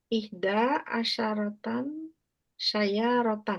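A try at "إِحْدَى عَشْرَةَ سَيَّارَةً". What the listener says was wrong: Asyrota, bukan tan ya. Ihda asyrota sayyaratan.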